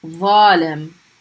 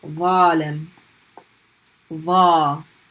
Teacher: they're both fricative, meaning your tongue is pushing against your teeth.